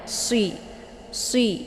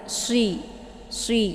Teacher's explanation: ujung lidahnya itu diangkat ke atas, hampir menempel pada gusi 2 gigi seri bagian atas. Jadi agak ke atas kalau dibandingkan dengan makhraj zai ya. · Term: shad